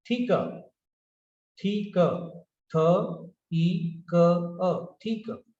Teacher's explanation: the ending r is not pronounced